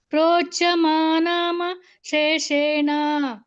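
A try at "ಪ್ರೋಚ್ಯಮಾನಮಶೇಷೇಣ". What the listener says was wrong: ಶೇಷೇಣ ಸಪರೇಟ್ಆಗಿ ಕೇಳಲೇಬಾರದು ಶೇಷೇಣ ತಕ್ಷಣ ಹೇಳಬೇಕು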